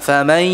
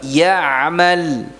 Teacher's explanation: Pada saat memasukkan nun sukun pada huruf ya-nya ini berdengung. Jadi bukan famai, salah.